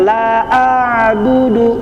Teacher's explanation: Hati-hati bahwa ain itu makhrajnya ada di tenggorokan bagian tengah atau di tengah tenggo tenggorokan ya.